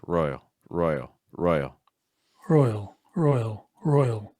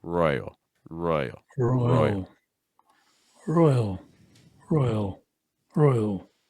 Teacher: see if you can go lower in pitch on the dark L at the end